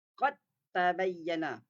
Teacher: Qad masuk pada huruf ta terus tapi tidak dengung. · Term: idgham tidak dengung